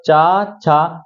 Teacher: जीभ कहां जा रही है हमारी तलवे प जा रही है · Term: च वर्ग